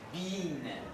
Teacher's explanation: Long E. Close, front, with spread lips.